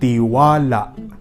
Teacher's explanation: inot iyo ang pagbagal kan silaba na wa, tiwala. Alagad bako sa naiyan, kundi ikadua, igwapa nin impit o glottal stop sa huring silaba na la, tiwala.